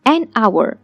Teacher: Hour begins with the consonant letter H, but the H is silent here, and when you speak, it sounds like hour, that is the vowel sound we just referred.